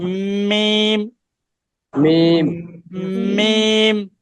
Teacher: দুই ঠোঁটের শুকনা জায়গা হতে উচ্চারিত হয় মিম